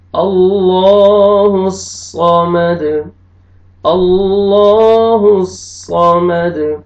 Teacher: وقف کی صورت میں دال ساکن ہو جائے گا اور دال پہ قلقلہ کریں گے